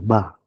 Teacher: Ba ini adalah huruf yang keluar di kedua bibir. Kedua bibir, ba. · dia bersifat jahar. Suara pada angin tertahan. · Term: huruf ba